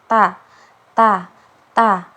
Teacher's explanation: huruf ta itu makhrajnya di ee ujung lidah bertemu dengan apa bertemu dengan belakang dua gigi seri atas